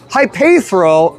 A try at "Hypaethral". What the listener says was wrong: You were just adding extra vowels that aren't there. Yeah, Hypaethral.